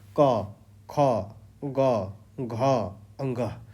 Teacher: क वर्ग वो सब कंठ से उच्चारण होते हैं। देखिए क ख ग घ और ग ये क्या हो रहा है हमारे कंठ के अंदर से आ रहा है।